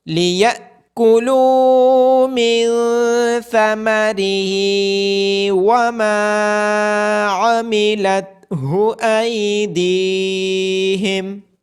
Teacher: حمزہ کے اوپر سکون ہونے کی وجہ سے اس کو جھٹکے کے ساتھ پڑھیں گے